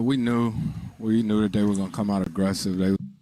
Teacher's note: we knew we knew that they were gonna come out aggressive i'm personally hearing that stress coming down on aggressive